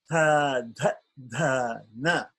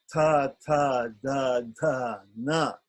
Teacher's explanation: with the dentals the tongue is touching the tip of the teeth not the back of the teeth but the tip